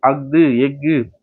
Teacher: ஆயுத எழுத்து அஃது எஃகு அரை மாத்திரை அளவுல முழுமையா ஒலிக்கிறது.